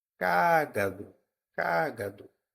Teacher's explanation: cágado tem a antepenúltima sílaba tônica Então ela é uma proparoxítona